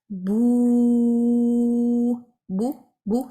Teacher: اپنے ہونٹوں کو راؤنڈ کرتے ہوئے، اپنی زبان کو پیچھے سے جو ہے وہ اٹھاتے ہوئے میں اس واؤ کو ادا کروں گی